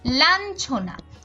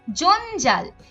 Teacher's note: যখন চ বর্গের বর্ণ যুক্ত হয়, অর্থাৎ চ, ছ, জ, ঝ এগুলো যখন যুক্ত হয় তখন এর উচ্চারণ ন এর মতো হয়।